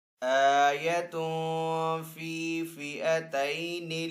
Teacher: تا ہے، تا کے اوپر دو پیش ہے، دو پیش کو تنوین کہتے ہیں، تنوین کے بعد فا حروف اخفا میں سے تو یہاں پہ اخفا والا غنہ کریں گے